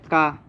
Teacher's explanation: का उच्चारण स्थान क्या होता है कंठ, ये सही है। का अल्प प्राण होता है